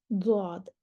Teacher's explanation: इन हरूफ को अदा करते वक्त मखरज में आवाज़ दराज रहती है, यानी कि लंबी रहती है, लंबी हो जाती है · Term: इस्तितालत